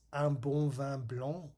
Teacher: it has all 3 nasal vowels, and you can hear this one in the un and the vin for white wine.